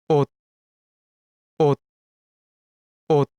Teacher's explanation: because it is a bachim, which is the consonant that is found in the final position of the syllable, then its sound becomes T.